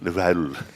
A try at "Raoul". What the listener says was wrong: You got to roll that R. Raoul.